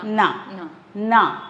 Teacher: அந்த நாவை நுனி நாக்கு கடிச்சு தான் உச்சரிக்கணும்